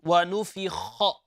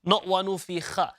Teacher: it is from the upper part of your throat